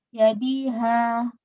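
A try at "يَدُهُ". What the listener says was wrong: yaduhu. Kok yadi terus?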